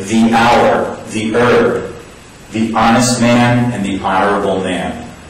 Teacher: in these words, you don't pronounce the H. So it's just our, and as you can hear in our, it's a vowel sound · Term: silent H sound